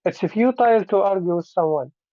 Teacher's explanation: So you start high, futile, and then you finish low, someone.